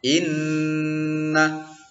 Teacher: Jadi nunnya itu apabila bertasydid dibaca dengung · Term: gunnah